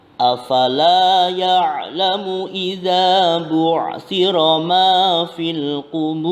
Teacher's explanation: La pada lafaz afala adalah mad tabi'i, yakni bacaan panjang satu alif karena harakat fathah diikuti alif